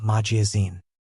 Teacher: Magazine has stress on the last syllable. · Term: word stress